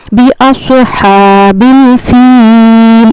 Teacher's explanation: इसको हमें या मद्दा को खींच कर पढ़ना है। · صاد ادا ہوتا ہے، آپ جب ہونٹوں کو گول کریں گے صاد ادا ہوگا آپ کا، اس میں ہمیں سیٹی کی آواز نہیں آتی۔